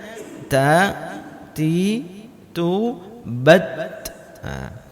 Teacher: Dia huruf ta itu sifat bawaannya itu emang berangin.